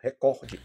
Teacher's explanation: a sílaba tônica não é ré, é cor